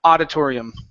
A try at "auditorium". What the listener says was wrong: Okay, almost. Open up your mouth. Auditorium.